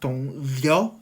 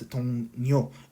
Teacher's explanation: And here liu is approximate or liquid, whatever. So yeah, after nasal sound here, the liu change as niun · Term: assimilation